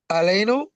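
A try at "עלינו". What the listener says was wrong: Aleinu. Very good. Aleinu. Perfect.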